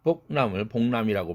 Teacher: 그래서 복할 때 윽 사운드가 응으로 바뀐 겁니다. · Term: 울림도 동화